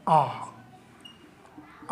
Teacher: अर्ध वर्तुल जिसमें आधा ही मुह खुलता है